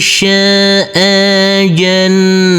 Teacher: huruf nunnya harus kita semar-semarkan karena ini adalah bacaan ikhfa